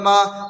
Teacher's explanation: زبر کو جلدی پڑھیں، تھوڑا بھی نہ کھینچیں